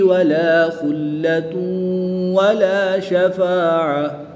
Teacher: دو پیش کی تنوین کے بعد واو حرف مرمون میں سے ہے تو یہاں پر ادغام مع الغنہ ہوگا